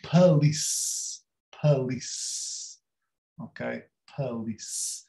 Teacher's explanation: Nós queremos dizer police ou police, mas é pa, police, police, ok, police. E é um A fechado, police.